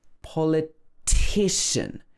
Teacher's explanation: the politician is stressed on the third syllable